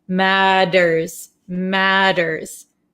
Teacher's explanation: this T sound here in American English is going to sound like a soft English D sound. D, d, d. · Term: American soft D sound, soft D sound